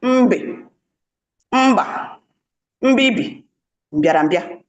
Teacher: Ya na ọ bụ ụda egbugbere ọnụ abụọ. · a voiced bilabial sound